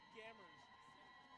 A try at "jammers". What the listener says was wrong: a soft, It's a soft G.